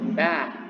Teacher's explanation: dibaca E tapi dibuka dengan mulut, ya, dibuka mulut sehingga terdengar seperti A